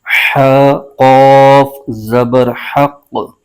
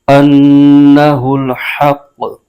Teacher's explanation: مشدد حرف ہے، قوف کو ہا کے ساتھ ملائیں گے اور قوف حروف مستعلیہ کا حرف ہے، اس کو پر یعنی موٹا کر کے پڑھنا ہے ، قوف کے اوپر پیش ہے، اس کو آگے بغیر کھینچے